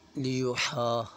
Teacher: ہا کے اوپر مد ہے، اسے ہم 4 الف کے برابر کھینچیں گے